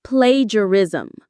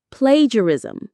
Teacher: The stress is on the very first syllable.